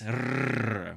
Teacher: you're probably going to be very familiar with the famous rrr, which is this alveolar trill